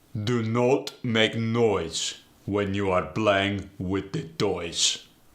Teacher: The OI sound goes to the OE sound.